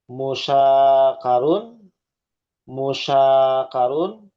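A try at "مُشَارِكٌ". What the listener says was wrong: Musyarakun. Kebalik, bukan musakarun, kebalik. Bukan karun, bukan karun, kebalik rokun. Kebalik. Tuh, bukan karun, rokun.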